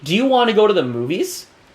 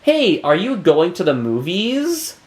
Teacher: my tone of voice is going up a little bit at the end of the sentence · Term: intonation